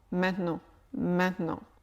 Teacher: c'est maintenant mais à l'oral il devient très souvent maintenant maintenant le T n'est pratiquement pas prononcé il devient quelque chose de nasal maintenant je ne prononce pas vraiment un T maintenant à la